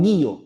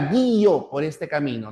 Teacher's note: Cuando tenga la fuerza de voz en la cerrada, ya no será una monosilábica, sino será una bisilábica con hiato acentual